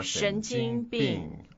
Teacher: 神, second tone. 经, first tone. And 病, fourth tone.